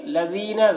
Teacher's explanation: ذال کو باریک پڑھیں گے اور یا مدہ ہے، ایک الف کے برابر کھینچ کر پڑھیں گے